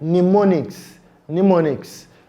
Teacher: The m sound there is not pronounced. So when you are asked to spell the word mnemonics, remember it has the letter M, but the sound m is silent. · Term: silent m sound